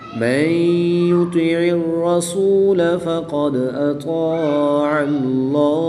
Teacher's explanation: اس میں جلالت اللہ عز و جل کے لام سے پہلے حرف پر زبر ہے، تو اس لیے اس لام کو پر یعنی موٹا پڑھیں گے.